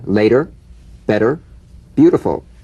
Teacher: the medial T becomes a soft d all right it's not a complete D but it goes toward a d